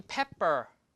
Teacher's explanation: The first P is aspirated. The second P is not aspirated.